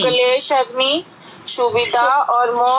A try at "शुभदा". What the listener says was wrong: शुभिदा नहीं, शुभदा, शुभदा, शुभी नहीं, हाँ हाँ, क्लेश नहीं, शुभदा।